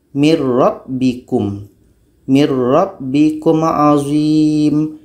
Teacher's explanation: al-baqarah ayat 49 huruf pertama adalah Nun huruf yang kedua Ro Jadi bunyi nun mati ini masuk kepada ro kalau kita baca min rbikum itu belum masuk secara sempurna tapi